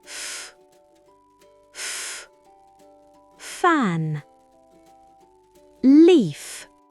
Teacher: Ici, l'air frotte de manière continue pour créer un sifflement. Pour le son F, les dents du haut touchent la lèvre inférieure.